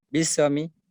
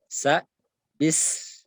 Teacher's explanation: Ditahan bis, dan dinyaringkan bunyi sa, karena sa itu termasuk huruf hamas, dan dia rakhawa lagi. Rakhawa itu mengalir suara, hamas mengalir udara. Bis perjelas, sa bis, sama dengan ketika membaca misalkan yuwaswisu, perjelas huruf sa-nya.